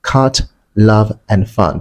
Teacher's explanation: the open mid-central vowel sound found in words such as cut, love, and fun